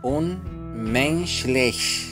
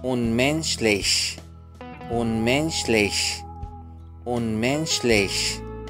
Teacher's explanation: الشين الأخيرة تكون بين الشين والخاء